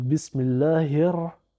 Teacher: on a un Lam qui ne se prononce pas non plus parce qu'il est suivi d'une lettre solaire qui est dédoublé par la chadda encore on va faire la liaison avec le premier RA donc · on va faire la liaison avec le premier RA donc bismillahir et ensuite on va dire le RA bismillahir on a le